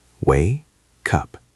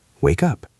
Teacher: It feels like the K now belongs to the second word.